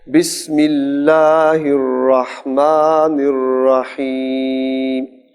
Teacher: جیسے آپ نے الرحمن میں ہا صحیح ادا کی ہے، ایسے الرحیم میں بھی حلق سے آئے